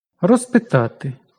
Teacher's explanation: П глухий, тож з оглушується до с.